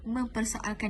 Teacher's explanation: Selain itu, dalam perkataan mempersoalkan ini juga berlaku penyesuaian nasal, iaitu fonem ne pada imbuhan men yang berubah menjadi meh pada imbuhan mem kerana fonem awal pe pada persoal itu adalah letupan dua bibir, lalu membentuk mem tanpa menggugurkan pe pada perkataan persoal itu, dan ia mengekalkan pe pada keseluruhan perkataan.